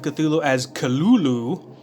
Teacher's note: Lovecraft transcribed the pronunciation of Cthulhu as Cthulhu, and said that the first syllable pronounced gutturally and very thickly. The U is about like that in full.